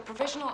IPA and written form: prəˈvɪʒ.ən.əl (Provisional)